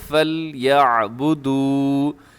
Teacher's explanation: اس میں لام کو قلقلہ ہونے سے بچائیے گا ، فَلْيَعْبُدُوا، اور اسے آپ نے لمبا کرنا ہے، آخر میں